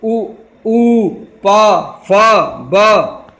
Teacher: ओष्ठ माने होठ, यानी हम इसमें दोनों होठों की सहायता लेते हैं